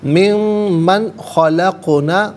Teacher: کثیرن من غلط، کثیر من میں نون ساکن ہے، اس کے بعد خلقنا میں خا آ رہا ہے حرف حلقی، تو نون ساکن کو یہاں پر اظہار کے ساتھ پڑھیں گے، اخفا یا غنہ نہیں کیا جائے گا · قاف ساکن ہے، یہاں پر بھی قلقلہ ہوگا، آواز لوٹتی ہوئی محسوس ہونی چاہیے